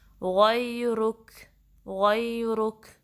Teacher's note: غیرک، غین میں گا کی ساؤنڈ نہیں آنی چاہیے، اس کو صحیح سے پڑھنا ہے۔ سب سے اوپر جو حصہ حلق کا وہاں سے نکلتا ہے غین، ادنی الحلق